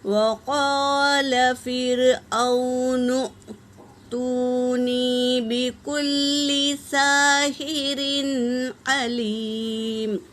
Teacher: نون حرکت ہے اور یہاں پر حمزہ ساکنہ ہے تو یہاں پر جھٹکا ہوگا · لام پر تشدید ہے، اسے 2 بار پڑھیں گے · واو ساکن سے پہلے پیش واو مدہ، یہاں پر ایک الف کی مقدار کھینچیں گے